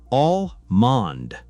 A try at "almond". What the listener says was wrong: Almost. The L is silent. It's almond. Don't pronounce it, just say almond.